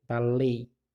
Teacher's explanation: E esse som de baleia é um som fraco no ditongo. Então, aqui eu tenho um ditongo fechado para baleia, porque é um som fraco.